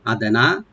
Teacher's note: হামজাকে right দিবেন, দালটাকে একটু আমরা কলকলা করব